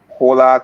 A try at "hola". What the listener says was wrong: You did not just pronounce Spanish like that, did you? You did not just pronounce the H in hola.